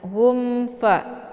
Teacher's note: atau jelas bunyi m-nya cukup ditekan saja tidak perlu ditahan humfa hukum bacaan izhar syafawi jelas tiada berdengung Jadi dibacanya gumfa bukan humfa nah ditahan itu bacaan yang salah · sukun bertemu dengan huruf Fa dinamakan dengan izhar syafawi cara bacanya mimnya dibunyikan secara jelas atau jelas bunyi m-nya cukup ditekan saja tidak perlu ditahan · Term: idhar syafawi